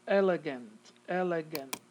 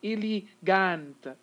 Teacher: the schwa is taking the place of the e and the a